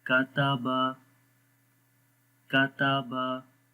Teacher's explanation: बारीक पढ़ेंगे तीनों हुरूफ, मोटा नहीं पढ़ेंगे और लंबा भी नहीं करेंगे